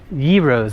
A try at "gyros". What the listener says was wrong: I think we say heroes. I think the G is like an H.